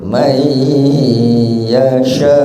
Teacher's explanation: Kalau mayyasha di situ nun sukunnya hilang, hanya mim fathah ketemu ya tasdid ya. Kalau ada nun sukun di situ kaidah tajwidnya adalah bacaan idgham bi gunnah, masuk dengan mendengung, man dimasukkan ke ya jadi mai.